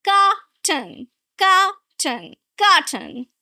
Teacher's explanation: Two syllables. Right? You're going to stress the first syllable.